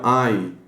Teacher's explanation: em contraste com o H, ele tem uma contração leve no fundo da garganta, ali, na faringe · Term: mais faríngeo